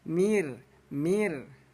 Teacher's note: Nah, jadi bunyi ro kita baca tipis. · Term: ro tarkik